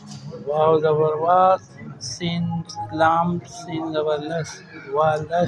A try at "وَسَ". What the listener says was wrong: لام نہیں ہے بھائی. نہیں، واو سین زبر بس. لام نہیں ہے، وہ آگے بعد تا ہے.